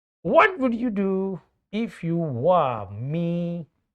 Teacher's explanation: In question, your voice should fall. At the start of the sentence, it should be high, and at the end of the sentence, your voice should be at low end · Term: falling intonation